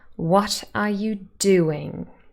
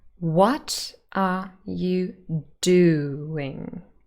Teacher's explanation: the sentence has five syllables and the first and fourth are stressed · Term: sentence stress